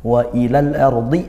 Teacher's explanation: Al ardhi ro sukun dibaca tafkhim tebal karena rnya sukun.